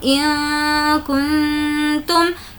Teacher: برہانکم ان کنتم، یہاں پر بھی کاف ہے نون ساکن کے بعد اس لیے نون ساکن کی آواز کو ناک میں چھپائیں گے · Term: اخفا